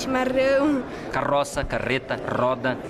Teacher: O pessoal de São Paulo, capital, Curitiba e boa parte dos gaúchos faz o R com a ponta da língua.